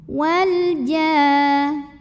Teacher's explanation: Karena alif lam menghadapi huruf qamariyah yaitu jim. Maka lam sukun dibaca dengan jelas. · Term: Idhar qamari